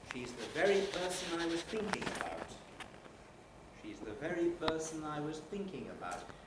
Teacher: in the falling group we have the combination of high head and high fall